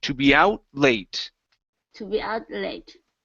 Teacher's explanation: So connect the T and the L.